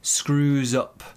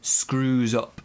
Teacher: we link the s and the uh sound with a z sound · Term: linking